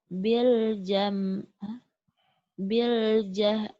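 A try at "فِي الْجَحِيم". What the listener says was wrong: Bukan bil tapi fil. Fil jahim. Fil. Ke bawah salah ya.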